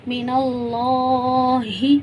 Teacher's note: लाम पे खड़ा ज़बर है तो हम इसे एक से दो मिक़दार खींच कर पढ़ेंगे